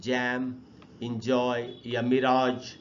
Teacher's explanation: the sound ज इज a voiced, ये एक वॉइस साउंड होता है, and it's a post alveolar एफ्रिकेट and इज considered a sibilant sound